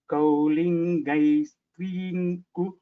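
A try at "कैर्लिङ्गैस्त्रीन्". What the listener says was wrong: It is not cow. It is not cow, Mahodaya. It is kai. Kairlingaistreen.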